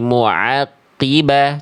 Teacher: ain itu dilafalkan dari tengah tenggorokan.